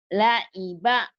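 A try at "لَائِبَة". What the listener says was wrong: La'iba ain. La'iba ain. Ya, nanti dilatih ain ya. La'iba. Kayak keselak. La'iba.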